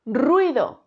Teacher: la u y la i quedan unidas formando este diptongo